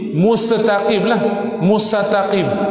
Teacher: seorang itu menyebut perkataan Al-Mustaqim dengan mentasydidkan huruf sin pada Al-Mustaqim, atau mentasydidkan huruf ta pada Mustaqim juga.